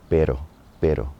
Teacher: That R in the middle of the word is more just like a T, like a tap on the roof of your mouth.